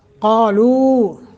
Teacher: لو حروف مدہ ہے، ایک الف کے برابر لمبا کرنا ہے